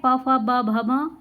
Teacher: प फ ब भ म ये ओष्ठ हैं, होठों से बोले जाते हैं।